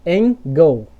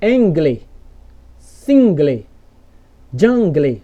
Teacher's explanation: É como se o L trocasse de posição com a vogal E. Beleza? Sempre que acontecer isso aqui, ó, no final das palavras. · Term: L invertido